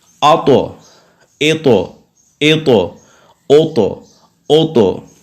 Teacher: اس میں قلقلہ بھی ہو رہا ہے اور اس کو مفخم بھی پڑھنا ہے، یعنی موٹا بھی پڑھنا ہے. آتو ایتو ایتو اوتو اوتو.